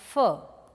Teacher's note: labiodental lower lip and the upper teeth